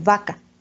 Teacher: le decíamos V labiodental, porque no cierra uno los labios para pronunciar vaca